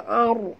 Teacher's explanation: Ar bukan ar. Ra itu mati. Huruf sebelumnya baris atas kena baca tebal. Ar. Naikkan lidah ke atas.